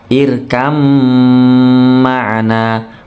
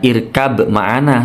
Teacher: Ini disebut bacaan idgham mutajanisain, makhrajnya sama atau tempat keluar hurufnya sama, sifatnya sama, maka baknya melebur menuju mim, dengung mingkem ditahan.